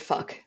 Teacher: maybe there's also something nice about that harsh sounding velar plosive at the end